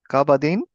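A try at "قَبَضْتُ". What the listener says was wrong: Excellent, excellent.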